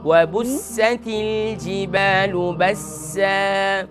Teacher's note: یہاں پر سین کے اندر صفیر کو ادا کریں